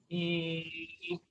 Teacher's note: first give an e sound e and then keep on with that e sound and just round the lips